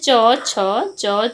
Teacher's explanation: मुख विवर में हवा के रुकने के बाद संघर्ष के साथ बाहर निकलने और स्पर्श संघर्षी कहते हैं।